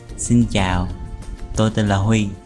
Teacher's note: the southern dialect does not normally distinguish between the asking tone and the tumbling tone, and they also pronounce certain consonants differently.